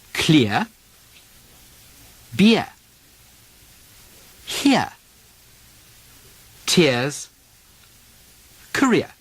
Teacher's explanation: The R drop from the ear sound leaves the diphthong ear